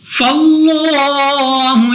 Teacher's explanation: لام اف اللہ سے پہلے حرف پر زبر ہے تو اس لام اف اللہ کو پر یعنی منہ اور آواز کو کھول کر پڑھا جائے گا، موٹا ہا کی ادائیگی میں فرق رکھنا ہے۔